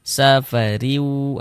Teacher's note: Ini baris dua di bawah huruf kasratain ya. Maka huruf ro dibaca tipis dibaca tarkik. Safariu seperti itu. Sehingga pangkal lisan kita tidak naik terangkat ke atas. tipiskan huruf rnya safariu. · Sehingga pangkal lisan kita tidak naik terangkat ke atas, tipis kan huruf ra-nya.